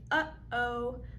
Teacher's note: that stop between uh o is a glottal stop made by closing right there at the glottis